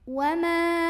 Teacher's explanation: mimnya ini kita panjangkan, boleh 4 boleh 5 harokat. Wama, ada ikhfa ausat karena ada nun sukun yang ketemu sama huruf fa. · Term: mad jaiz munfasil